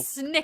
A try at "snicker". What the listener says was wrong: Pronounce that K.